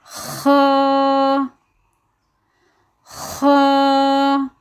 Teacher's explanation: ہماری زبان کی جو جڑ ہے، جہاں ہماری زبان ختم ہو رہی ہے، وہیں سے اس لفظ کا مخرج ادا ہوگا۔ اس کے نکلنے کی جگہ وہ ہے، وہاں سے ہی یہ لفظ ادا کیا جائے گا، خا، اور اس کو موٹا پڑھا جائے گا۔